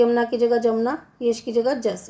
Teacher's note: य के स्थान पर ये ज का प्रयोग किया जाता है इस बोली में